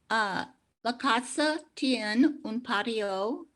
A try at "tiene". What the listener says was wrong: Tiene. Make sure you pronounce your e at the end of tiene. Tiene, un patio.